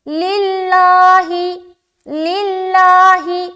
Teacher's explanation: لفظ اللہ کا لام کو ہم باریک رکھیں گے کیونکہ لفظ اللہ کے لام سے پہلے زیر ہے. اس لام کے نیچے زیر ہے نا تو اس لام کو ہم کیا کریں گے باریک رکھیں گے.